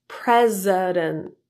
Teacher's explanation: the T in the final NT blend was deleted in the word president